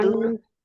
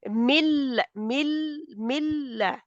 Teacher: من لدنه نہیں، نون کو نہ بولیں آپ بیچ میں. ملا ملا ڈائریکٹ ملا ہے، من لدن کیونکہ لام اور را کے اوپر ادغام گننے کے بغیر جی ہوتا ہے نا.